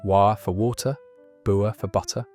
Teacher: Glottal stops replaced hard T's